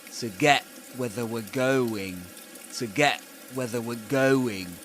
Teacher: To get where they were going, which is usually the case when he pronounces the word get. Usually he produces a glottal stop at the end.